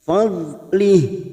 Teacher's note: Kita wakaf pada tanda wakaf jaiz, jim kecil, lih ujungnya kita rem.